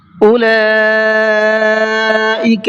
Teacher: اولئک کے اندر یہ بڑا مد ہے، مد متصل جس کو کہا جاتا ہے، اس کو 4 سے 5 الف کی برابر کھینچ کر کے پڑھنا ہے